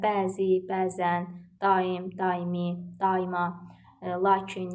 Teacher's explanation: bu tip sözlərdə uzanma ilə vurğu eyni hecanın üzərinə düşmüş olur